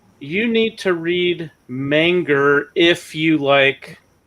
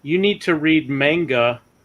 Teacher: when you guys have the word that ends in a but then the next word starts with a vowel usually the word that ends with an a you add an R onto the end of it